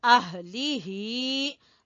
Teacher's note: दोनों हा अक्सा हलक से